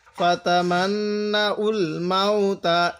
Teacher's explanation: এই যে নুনের উপর তাসদিদ, এই জন্য আমরা গুণনা করব।